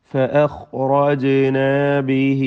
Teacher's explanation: ജീമിന് സുക്കൂൻ ഖൽഖലയോടെ ഉച്ചരിക്കുക. ശബ്ദം ഹറക്കത്ത് പോലെ വ്യക്തമാക്കി ചലിപ്പിച്ച്.